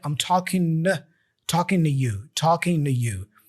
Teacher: We don't pronounce the G for talking there.